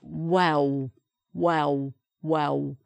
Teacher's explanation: So the tongue doesn't do any L sound inside the mouth. The lips are just pulled back together again.